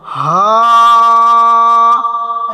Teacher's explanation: হা বলার সময় গম্ভীর আওয়াজ হবে